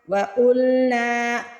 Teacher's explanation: قاف کو موٹا پڑھنا ہے، نون کے آگے الف ہے، نون کو کھینچ کے ادا کرنا ہے۔